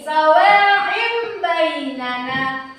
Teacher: Berubah seperti huruf mim dan menahan 2 ketukan. Contohnya, sawaim, huruf ba kita ganti dengan huruf mim. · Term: iqlab